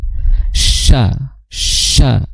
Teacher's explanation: Huruf sya itu makhrajnya adalah di tengah lidah. Nah, tengah lidah itu terdapat tiga huruf. · sya ini yang pertama dia suaranya ringan karena istifal